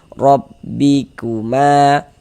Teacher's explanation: huruf ro dibaca tebal, dibaca tafkhim, sehingga pangkal lidah kita naik terangkat ke atas ketika kita mengucapkannya.